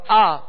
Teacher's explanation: منہ اور آواز کھول کر مگر بغیر کھینچے، بغیر جھٹکا دیے ادا کرنا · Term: زبر